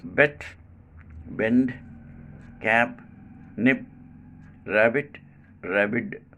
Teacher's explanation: this sound is called bilabial voiced plosive